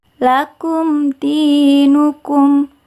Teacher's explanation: Mimnya terbaca jelas karena ini adalah hukum bacaan idhar syafawi.